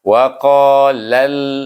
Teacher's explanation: Sebab alif lam samsiah, sebab huruf lam itu sendiri adalah huruf samsiah. Jadi kita kena baca dengan idgham samsi, masukkan lam kepada lam